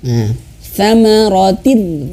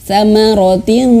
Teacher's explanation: Thamaratin tidak, tapi langsung masuk ke ro. Ini kasrah tain, tin, langsung masuk ke huruf ro.